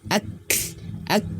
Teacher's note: berdekatan ya makhrajnya berdekatan nah tapi untuk sifatnya berbeda huruf Kab Dia memiliki sifat Hames mengalir nafas dan juga syiddah tertahannya suara · ketika dia sukun ya ketika dia mati maka tertahan dulu suaranya huruf Kaf